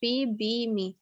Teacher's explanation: The lower lip articulates against the upper lip. The sounds p, b, me are made by completely closing the lips. The sounds p is voiceless, b, are voiced. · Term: bilabial